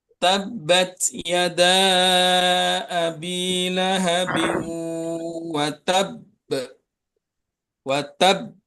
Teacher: Nah, ini yang tadi yang dibahas itu yaitu ee qalqalah kubra ini lebih pantulannya lebih kuat dari seperti yang biasanya tidak bertasydid ya. Huruf qalqalah yang bertasydid atau bersyiddah itu pantulannya lebih kuat daripada yang tidak bertasydid